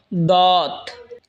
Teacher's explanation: জিহ্বার আগার কিনারা ওপরের মারের দাঁতের গোড়ার সঙ্গে লাগা উচ্চারণ হবে দত